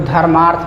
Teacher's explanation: इसमें अ और अ मिलके आ बना है, अ और अ मिलके आ बना है। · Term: दीर्घ